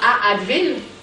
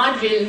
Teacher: quand on a A devant une voyelle qui est trop semblable à elle-même, on a une fusion qui s'opère. Donc, A, il n'est pas vraiment facile de garder les deux voyelles distinctes et elles se fusionnent.